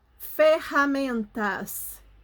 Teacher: quando a gente pronuncia ferramentas, o rá parece que tá lá na garganta